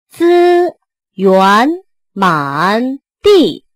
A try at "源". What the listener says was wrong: 这 个 源 最 后 又 憋 住 了 ， 源 ， 资 源 ，